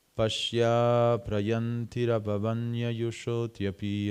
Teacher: The O of Yoshito becomes part of api.